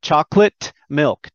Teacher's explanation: i don't make the t sound i cut it i shape it but i don't say it chocolate milk and i also don't say the k on milk